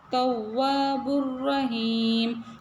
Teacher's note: தாவுல ஷத் இருக்கறதுனால தவ்வாபுர் ரஹீம் அந்த தாவுக்கு அழுத்தம் கொடுக்கணும் அதே தொடர்ந்து வாவ்லயும் ஷத் இருக்குது இந்த இடத்துலயும் அழுத்தம் கொடுக்கணும் வாவுக்கு பக்கத்துல